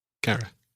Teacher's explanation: this is the single r which is this kind of flick on your alveolar ridge just below your hard palate